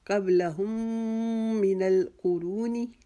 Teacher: ہم کی جو میم ہے اس کو اگلی من القرونی کی جو میم مشدد ہے اس کے ساتھ ملا کر ایک الف کی جتنا وہاں پر میم مشدد کا گنہ کریں گے